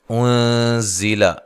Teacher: انزل، یہاں نون ساکن کا اخفا ہے، اخفا مع الغنہ ہے، باریک اخفا کرنا ہے۔ زا کو زور سے ادا کرنا ہے، سیٹی کے ساتھ ادا کرنا ہے، لمبا نہیں کرنا۔